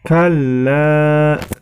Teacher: Ya, di ayat yang ke-18 ini yang perlu diperhatikan adalah yang pertama, kalla. Di situ terdapat hukum bacaan mad wajib muttasil. Maka cara membacanya dibaca panjang 5 harokat.